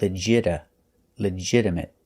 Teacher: We notice that the T is pronounced with a fast D sound.